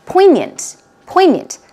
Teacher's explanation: stress goes on the first syllable